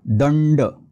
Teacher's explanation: या गटाचं अनुनासिक आहे न म्हणून हा शब्द होईल दंड बघा मराठीत आपण लहान न वापरतो नळातला पण संस्कृत मध्ये मोठा न येतो